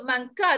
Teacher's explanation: Kalau nun mati bertemu dengan kaf tu, tapi kita hati-hati untuk nun mati tu bertemu dengan kaf. Jadi kita tahu nak hantar nun mati tu ke makhraj kaf.